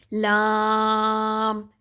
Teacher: जो हमारी जबान की करवट है आखिर से ले नोक तक का हिस्सा वह अगले जो हमारे दांत हैं उनके मसूड़ों से लगेगी तो लाम अदा होगा · جو ہماری زبان کی کروٹ ہے آخر سے لے کے نوک تک کا حصہ وہ اگلے جو ہمارے دانت ہیں ان کے مسوڑوں سے لگے گی تو لام ادا ہوگا